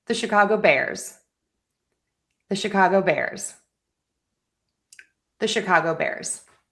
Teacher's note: Put it all together. We're going to stress Bears.